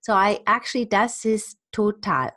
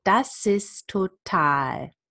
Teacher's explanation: I drop this T and link the T and the S and the T together.